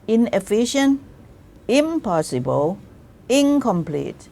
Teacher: if you just make the negative form of complete, you just write in, but it is pronounced as ing